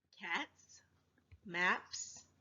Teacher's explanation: you say it you should pronounce that s with the unvoiced when I make that sound I can't feel my throat vibrate that's how I know it's unvoiced · If the last sound of the base word is unvoiced, meaning you can't feel your throat vibrate when you say it, you should pronounce that S with the unvoiced S.